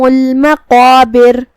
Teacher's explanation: قاف کی ادائیگی زبان کے جڑ اور تالو کے نرم حصے سے ہے. قاف حروف التفخیم میں سے بھی ہے تو ہم اسے بھاری آواز میں پڑھیں گے.